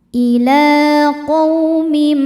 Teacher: Karena ada huruf lam dengan harakat fathah panjang. Cara bacanya panjang dua harakat. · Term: mad thobi'i muqaddar